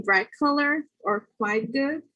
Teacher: the T becomes K before a velar consonant